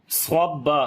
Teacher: صاد کو موٹا پڑھیں گے، صفت استعلا ہے اس کے اندر اور صفت اطباق بھی ہے